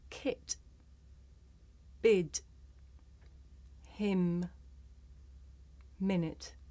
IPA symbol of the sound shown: ɪ